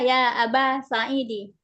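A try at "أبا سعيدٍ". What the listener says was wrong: Bukan nakirah. Bukan nakirah, tapi bisa ditanwin. Aba Sa'idin.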